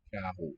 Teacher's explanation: Sounds voiced uvular, right?